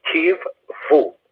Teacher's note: in modern Hebrew, it's a v sound, and since it has the doubling dagesh in the middle, there are two v's. Grammatically, there would be two v's, so it would be kiv-vu.